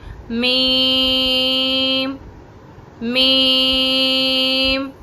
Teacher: اس چیز کا بھی دھیان رکھنا ہوتا ہے کہ ناک میں آواز نہیں جانی چاہیے